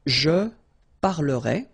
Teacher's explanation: The ending for je will be ai. Alright? And you pronounce it e. Remember, open e.